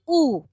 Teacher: উ এর ক্ষেত্রে যেটা হচ্ছে পশ্চাৎ, অর্থাৎ জিভটা পিছিয়ে যাচ্ছে এবং ঠোঁটটা কুঞ্চিত হয়ে যাচ্ছে। বাকি দুটো সেম থাকছে, জিভ তার সর্বোচ্চ অবস্থানে থাকছে এবং মুখের ভেতরে জায়গাটা খুব বদ্ধ থাকছে, খুব কম জায়গা থাকছে।